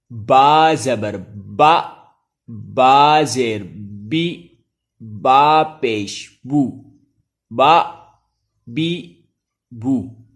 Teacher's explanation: با کا مخرج ہے دونوں ہونٹوں کا تر حصہ یعنی اندر والا حصہ